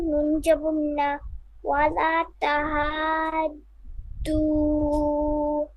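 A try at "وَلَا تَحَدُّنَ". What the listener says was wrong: ওয়ালা তাহাদ্দু, আমি নুনটা শুনতে পাচ্ছি না।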